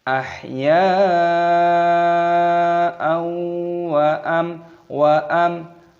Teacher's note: Ini hukumnya dibaca idhar syafawi, dibaca jelas, jangan didengungkan. Wa tidak boleh, harus dibaca jelas.